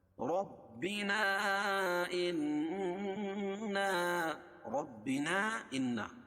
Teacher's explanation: ربنا، رب را پر ہوگی اور وا کو با میں سختی کے ساتھ ملائیں گے کیونکہ با کے اوپر تشدید ہے، تشدید والے حرف 2 مرتبہ پڑھا جاتا ہے۔